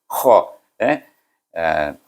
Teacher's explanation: Kenapa bunyi kuat sangat kha ni? Sebab dia ada di hujung halqum.